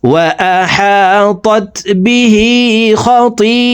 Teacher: খতিআতুহু হু এখানে 1 আলিফ টান, ঠোঁট গোল করে এই হাকে 1 আলিফ টানি পড়ব